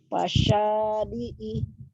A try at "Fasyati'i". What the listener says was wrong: Ti. Kok ya hurufnya?